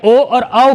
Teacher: कंठ प्लस ओष्ठ की सहायता से बोले जाते हैं। कंठ प्लस ओष्ठ की सहायता से बोले जाते हैं।